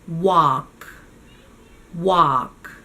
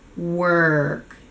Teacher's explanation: Just one thing to notice is that the L in walk is silent. So again, it's an open ah sound with no L. The tongue does not touch the roof of your mouth.